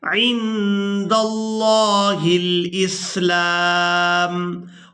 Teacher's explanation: अब यहाँ पर आप लोग ये नून साकिन देख रहे हैं, इस नून साकिन पर इख्फा किया जाएगा, यानी नून की आवाज़ को नाक में छुपाकर अदा करेंगे